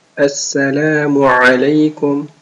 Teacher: عين from mid of the throat.